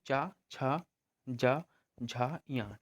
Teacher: ऊपर जो तालु हमारी होती है, तो उसको हमारी जो होती है जीभ का मध्य भाग जो होता है स्पर्श करता है